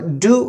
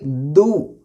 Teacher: دال بھی باریک، دو نہیں اور ڈو بھی نہیں، دی بھی نہیں اور دو بھی نہیں، بلکہ دال باریک، دو.